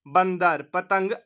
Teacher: अंग अनुस्वार का उच्चारण किससे किया जाता है? नाक से किया जाता है।